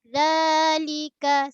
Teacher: Keluar sikit ujung lidah. Sama macam huruf ta.